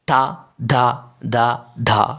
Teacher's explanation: പല്ലിൽ ഒന്ന് തട്ടിത്തടഞ്ഞു കൊണ്ടാണ് തായുമായി ബന്ധപ്പെട്ടിട്ടുള്ള അക്ഷരങ്ങൾ ഒക്കെ ഉച്ചരിക്കുന്നത് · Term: ദന്ത്യം